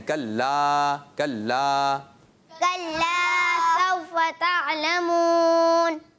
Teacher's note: کلا کا الف جو ہے اکثر بچے اور بڑے بھی کیا کرتے ہیں؟ کھینچتے نہیں، کھا جاتے ہیں، حذف کر دیتے ہیں. کھانا نہیں ہے اس کو، حذف نہیں کرنا، اس کو کھینچنا ہے.